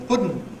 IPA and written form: ˈpʊdn̩ (pudding)